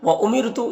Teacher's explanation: یہاں پر رائے ساکنہ سے پہلے میم کے نیچے زیر ہے تو را کو باریک پڑھیں گے